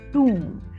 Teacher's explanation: letter B is silent and letter O has long ooh sound